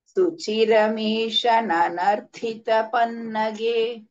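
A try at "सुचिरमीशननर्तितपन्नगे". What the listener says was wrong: Nanartitha. takara is not the Mahaprana. Last tha is a Mahaprana. Nanartitha, not Nanarthita.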